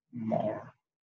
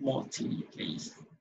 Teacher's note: the R is actually on the silent mode. It's not pronounced.